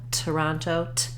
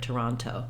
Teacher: going to have what's called an aspirated or true T Toronto I want to have that puff of air um letting some air out and releasing that